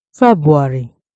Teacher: We can also see the R sound after the B as a short transition between syllable, which help the word sound natural. The second waveform shows an incorrect pronunciation, often pronounced as Febuary, where the first R is missing.